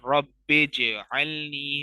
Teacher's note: बा को जीम से मिलाएंगे और कलकला करेंगे